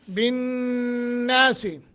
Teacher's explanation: بالناس یہاں غنہ کریں گے، نون مشدد ہے